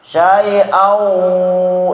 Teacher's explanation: Kalau syai'au idgham bigunnah, waw didengungkan.